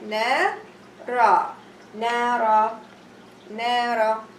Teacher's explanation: I'm going to elongate or make mad only for 2 haraka. Na, and here nara have long vowel alif.